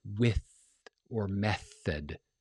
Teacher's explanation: words like with or method, those guys have no voicing patterns on them. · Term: unvoiced th sounds